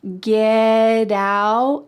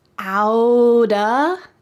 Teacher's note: So that T is surrounded by vowels and that means that it's going to change to a D sound.